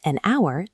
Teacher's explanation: But with our, the silent H disappears, leaving only the vowel sound. That makes an hour the only natural way to say it.